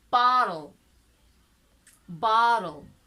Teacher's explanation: so there is no vowel sound between trl bottle